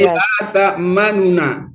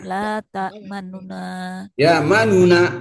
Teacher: Tapi kalau ikhtilas la ta'manuna nu-nya itu cepet.